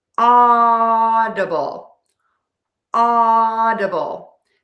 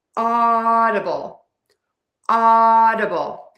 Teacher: Stress the ah, open, oval-shaped mouth for that. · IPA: /ˈɔ.də.bəl/